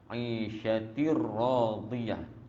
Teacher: Tanwin bertemu dengan ra, idgham bila gunnah.